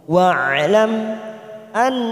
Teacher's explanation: wa'lam mim yang bertemu hamzah idhar safawi kita baca jelas tanpa mendengung · nun yang bertasdid bacaan gunnah kita tekan 3 ketuk